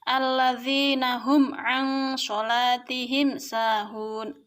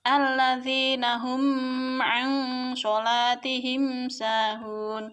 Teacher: cara membaca idhar syafawi yaitu dengan jelas di bibir dan di mulut tertutup tanpa dipanjang-panjangkan. Jadi bacanya harus jelas.